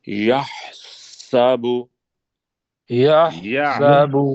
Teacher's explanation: ہا کو حلق سے نکالنا ہے، سین پہ سیٹی